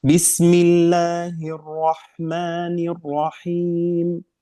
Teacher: Tikrar, sifat tikrar hanya satu kali.